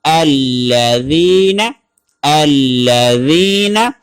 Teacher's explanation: زا سختی کے ساتھ ادا نہیں ہوگی بلکہ ذال نرمی کے ساتھ ادا ہوگی